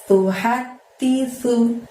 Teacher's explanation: sunya itu tipis, ujung lidahnya harus didorong ke gigi bagian atas